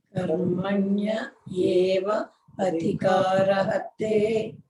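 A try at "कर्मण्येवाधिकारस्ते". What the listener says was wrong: No, initially you say karmani eva. Karmani eva adhikaraha te.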